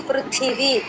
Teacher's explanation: థ పలకాలండి థ కాదు మహాప్రాణం ఉంది పృథివి అనాలి